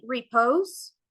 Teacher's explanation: it's formed by one unstressed syllable that is followed by one stressed syllable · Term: Amic